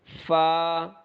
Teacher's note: फा को अदा करते हुए थोड़ा सा हमारे होठों से हवा बाहर निकलेगी